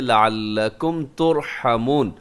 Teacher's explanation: ترحمون کے اندر بھی را موٹی پڑی جائے گی کیونکہ را تو ساکن ہے لیکن اس سے پہلے پیش ہے۔ اگر را ساکن ہے اس سے پہلے زبر یا پیش والا حرف ہو تو را کو پر پڑھتے ہیں، اگر اس سے پہلے زیر ہوتی تو ہم اس را کو باریک کر دیتے، لیکن یہاں پہ پیش ہے۔